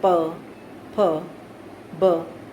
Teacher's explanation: जैसे कि हम बोल रहे हैं प, फ, ब, ये ओष्ठ्य वर्ण है, होठों से इनका उच्चारण किया जाता है